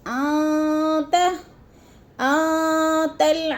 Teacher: آتل، ان میں اخفا ہے، نون ساکن کے بعد تا آ گیا ہے تو ادھر اخفا کریں گے، آواز کو ناک میں چھپا کر پڑھیں گے